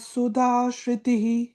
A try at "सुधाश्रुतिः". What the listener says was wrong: It is sa, okay? Should not say sha. It is not sha. It is sa. Sorry, not sha. Sa. Sa. As in, Swatma Rama sa, Tristha sa, Sandhya sa, Saumya sa. So sa.